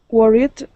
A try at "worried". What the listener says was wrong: Good, with a D ending, worried. Okay, so right now you're placing your tongue against your teeth, pronouncing a T, saying worried. You want to pull your tongue back.